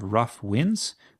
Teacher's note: This is where we have two stresses in a row. Uh this is called a spondi. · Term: spondee